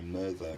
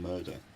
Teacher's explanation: this is a common kind of alternation where the th sound sometimes hardens to d between vowels